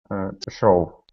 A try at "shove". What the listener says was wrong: Okay, instead of show, ove, it's sh. Sh.